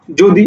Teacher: অন্তস্থ জয়ের উচ্চারণ বর্গীয় জয়ের মতো হচ্ছে